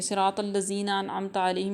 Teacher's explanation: صاد را طا کو موٹا پڑھیں گے، یہاں پہ ذال کو نرم پڑھیں گے اور یا کو لمبا کریں گے۔